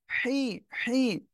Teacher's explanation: হা জের হি গলাটা চেপে পড়তে হবে গলাটা চেপে পড়তে হবে কিন্তু যদি চেপে না পড়েন তাহলে কিন্তু